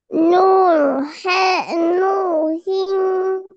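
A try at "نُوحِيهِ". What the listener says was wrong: নু হিং হবে না নু হিউ হবে?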